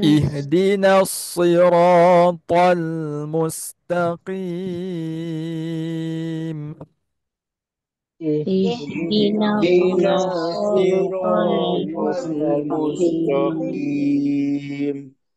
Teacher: sad dia tebal sin dia nipis